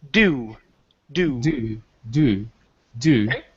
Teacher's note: when we say it it's really quick we don't want to push on that ooh sound